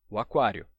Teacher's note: Eu quero visitar o aquário, o A. O O do artigo junta com o A fica o A, o aquário. Numa sílaba só, tá? Então, quando a gente diz o aquário, a gente pronuncia em 3 golpes de voz.